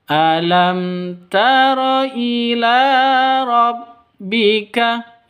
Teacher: Alam tara, mim mati bertemu dengan ta. Cara bacanya jelas terang. Kenapa? Karena bacaan izhar safawi, tidak boleh didengungkan.